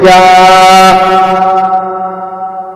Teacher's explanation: زبان کا بیچ جب تالو کے بیچ سے لگے تو یا غیر مدہ ادا ہوگا